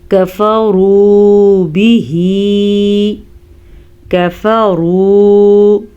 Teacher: काफ बारीक है तो बारीक ही पढ़ना है और रॉ को पुर पढ़ना है क्योंकि रॉ के ऊपर पेश है, वाव मद्दा पढ़ना है।